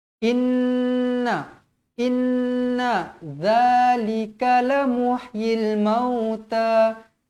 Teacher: Ingat, dua huruf ni, nun dan mim yang bertanda sabdu. Hukumnya wajibul gunnah, wajib dengung dengan kadar 2 harakat.